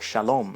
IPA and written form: ʃɜlo̞m (Shalom)